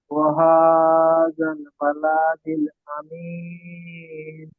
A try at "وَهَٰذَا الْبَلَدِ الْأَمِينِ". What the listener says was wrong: বালা টান দিলেন কেন? লামের উপরে যাবার হারাকাত। ওয়াহাযাল বালাদিল আমিন।